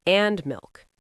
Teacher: And on the last item, your voice goes down. And milk, down. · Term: lists